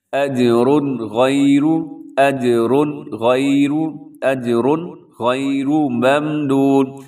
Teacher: اس کا مطلب یہ ہوتا ہے کہ یہاں پہ آپ نے غنہ نہیں کرنا کیونکہ تنوین کے بعد اجرن کے اوپر تنوین ہے اور تنوین کے بعد حروف حلقی میں سے غین آ گیا ہے تو یہاں پر اظہار ہوتا ہے، غنہ نہیں ہوتا. آواز کو ناک میں نہیں رکھنا بلکہ تیزی سے آپ نے پڑھ دینا ہے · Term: اظہار حلقی